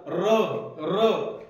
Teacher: त्या जिभेच्या शेंड्यावरती कंपन झाल्यासारखं वाटते ना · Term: कंपित वर्ण